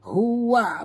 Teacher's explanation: ha simpul bunyinya dalam halqum